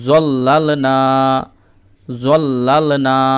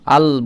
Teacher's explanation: লাম যখন উচ্চারণ করবেন তখন জিহ্বার আগাটা ওপরের দাঁতের মানে গোড়ায় ঠেকবে একদম। লাম আল বললেই দেখবেন মাখরাজটা বেরিয়ে যাবে।